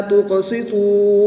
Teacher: قاف حروف قلقلہ میں سے ہے تو یہاں پر ہم قلقلہ کر کے پڑھیں گے۔ نون ساکن کے بعد کاف حروف اخفا میں سے ہے تو یہاں پر ہم اخفا یعنی غنہ زمانی کر کے پڑھیں گے۔